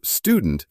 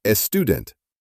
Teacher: Spanish speakers often add an E before an S cluster